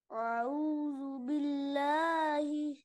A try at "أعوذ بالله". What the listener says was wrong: देखिए, शुरू में हमजा है, उसके बाद आइन है। हमजा को आइन की तरह ना पढ़े, हमजा को साफ पढ़े और आइन को गले से अदा करे। अऊदु अऊदु अऊदु अ अ अऊदु।